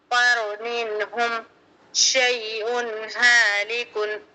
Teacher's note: یا ساکن سے پہلے شین پر زبر یا لین نرم آواز سے جلد پڑھیں گے